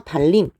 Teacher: 앞에 있는 리을의 영향으로 뒤에 있는 니은이 영향을 받아서 달림 요렇게 발음하게 됩니다